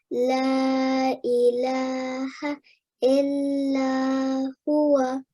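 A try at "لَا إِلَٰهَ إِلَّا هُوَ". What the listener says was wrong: Very good. Excellent recitation, mashallah.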